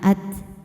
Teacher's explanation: Jangan lupa keluarkan angin di huruf ta ya. Ada sifat syidahnya juga kuat dulu dan anginnya belakangan. · hukumnya mad thobi'i zohiri sebab ada alif yang didahului harakat fathah. Cara bacanya panjang dua harakat.